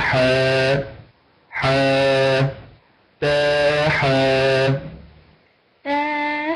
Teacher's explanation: اقول حضرتك بتقفلي بتقفلي بتقفلي الحلقه بعد اداء الحرف تقولي حاء لا تقفلي الحلق لا تقولي حاء قولي حا